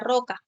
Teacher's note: va a ser la vibrante múltiple como ya lo habíamos mencionado a inicio de palabra